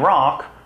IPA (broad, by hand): ɹɑk